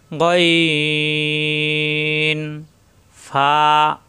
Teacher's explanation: উপরে দুই দাতের আগা নিচের ঠোটের পেটে লাগবে এক আলিফ পরিমাণ টান